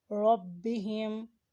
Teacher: با کو دونوں ہونٹ ملانے سے ادا کیا جاتا ہے